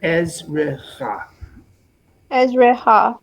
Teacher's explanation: When we have two shvas in the middle of a word, we pause on the first shva, it's non-vocal, ez, and then we pronounce the second as an open syllable, ezrecha.